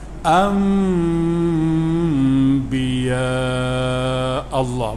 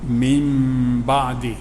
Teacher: nun mati bertemu ba, hukum dia iklaq, daripada nun tukar pada mim. Sebab tu atas nun tu ada mim kecil, jadi tutup mulut lah.